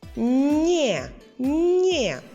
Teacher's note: ми чуємо м'який н і е Це нам дає літера є Отже записуємо N є і читаємо